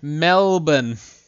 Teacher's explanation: You pronounce it without R sound. Yeah, we don't roll our R's here in Australia.